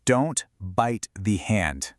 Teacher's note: Basically, for a T sound at the end of a word, you move your tongue into position like you're about to say it, but then you just stop. You don't release that little puff of air. The sound just gets cut right off. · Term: stopped T